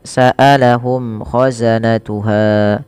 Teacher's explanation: mim mati bertemu k ada izhar syafawi dibaca dengan jelas suara mimnya tidak ada tembel-tembel penahanan